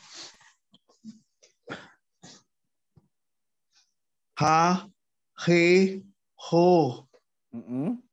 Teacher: Dan nafasnya, letak makhrajnya sudah tepat ya, sudah terdengar di tengah tenggorokan. Jadi tinggal melatih suara udaranya.